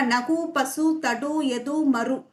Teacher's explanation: உ சவுண்டே குறையாது ஒரு மாத்திரையாதான் ஒளிக்கும் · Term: முற்றியல் உகரம்